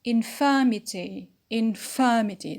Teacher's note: So the stress is on the antepenult just before ety.